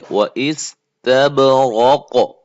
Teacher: قاف کو موٹا کر کے قلقلہ کر کے ادا کریں